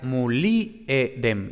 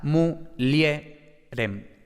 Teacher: la i pasa de ser una vocal silábica, pasa a ser un satélite silábico, es decir, pasa a ser una semiconsonante